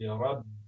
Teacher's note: په برب کې را زوه لري باید ډک ادا شي او په با باندې زور راشي